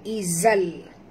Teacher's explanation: tanwin bertemu dengan lam masuk tanpa dengung idgham bila gunnah, eh. Jadi bacaan dia izal.